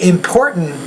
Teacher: You can say important, don't get me wrong, but if you say important, you're using the glottal stop, and that's a more common sound in American English